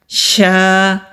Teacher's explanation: شین کو جب ہم ادا کرتے ہیں تو آواز منہ میں پھیلتی ہوئی ہوتی ہے، یہ والی آواز آئے گی۔